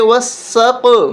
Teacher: واو سین زبر وس، سین کو قاف کے ساتھ، وسق، وسق، یہاں پر ہم قاف کو موٹا کر کے پڑھیں گے وسق، اور قلقلہ بھی کریں گے